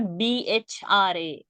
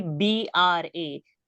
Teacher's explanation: I'm saying bra. Don't give a H sound. It is not a Mahaprana. It is not BHRA.